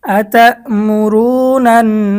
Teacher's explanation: এক জের এক পেশকে হরকত বলে, তো এখানে এক জবর আসছে, এক জবরের পরে নুনের মধ্যে তাসদিদ হয়েছে ওয়াজিব গুন্নাহ।